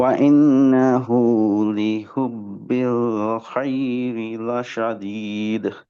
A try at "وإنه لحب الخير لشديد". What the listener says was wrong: খাই না, খই, খ।